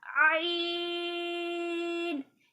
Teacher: اسے آئین کہتے ہیں, یہ حلق سے پڑھا جاتا ہے